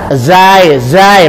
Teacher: Za di ujung lidah. Zai. Beda kan ya?